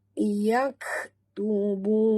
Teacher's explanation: bunyikan hamas pada kaf yang mati